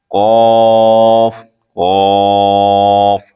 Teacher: قاف زبان کی جڑ تالو کے نرم حصے سے ادا ہوتا ہے